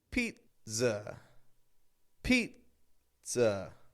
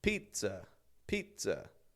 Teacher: Then there's a little stop. It's a very quick pause, but you hold the air back, and then a quick z to let it go.